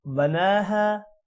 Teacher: نون پر کھڑی زبر ہے، نا لمبا ہوگا، اور ہا الف کی وجہ سے لمبا ہوگا۔